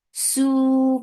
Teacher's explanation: Su for the circular lips, make it two counts long.